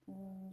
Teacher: Yang pertama yaitu kasroh, ialah vokal tinggi yang ada di depan ketika mengucapkannya, yaitu bibir agak terentang ke samping